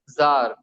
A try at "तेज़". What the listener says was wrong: नहीं, जाल नहीं आएगा। जे आएगा, जे आएगा, तेज।